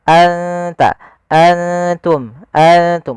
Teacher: di sini nunnya kita samarkan ke huruf ta langsung seakan-akan kita melafalkan huruf ta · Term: Ikfa